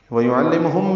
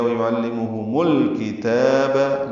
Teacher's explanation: اور لام سے ملائیں گے۔ وَيُعَلِّمُهُمْ میں میم ساکن تھا، لیکن الکتاب کا حمزہ عارضی ہونے کی وجہ سے میم کو لام سے ملا دیا گیا